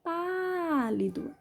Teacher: Sílaba tônica é o pá. Som aberto, acento agudo.